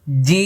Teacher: জিম দেখেছেন ঠোট কিভাবে লেগে গেছে কারণ জিমের শেষে মিম যেখানে মিম সেখানে মুখ বন্ধ